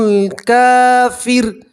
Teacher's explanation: اب یہاں کافر کے اوپر وقف کریں گے تو را کے اوپر آپ جزم پڑھیں گے اور را کو باریک پڑھیں گے. ٹھیک ہے, وقف کریں گے تو را کو باریک پڑھیں گے, ملا کر پڑھیں گے تو را کو آپ پور پڑھیں گے, موٹا پڑھیں گے.